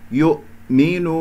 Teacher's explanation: لا أقول يؤمن وأخرج الهمزة ضعيفة، يؤمن هكذا أقطع بحيث أنه أقفل الأوتار الصوتية تماما ويظهر عندي صوت الهمزة واضحة